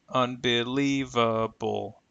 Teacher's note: notice the schah is used for the last two vowel sounds